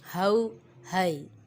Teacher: یہ ہا حلق کے نیچے والے حصے سے ادا ہوتا ہے، حروف حلقیہ میں سے ہے۔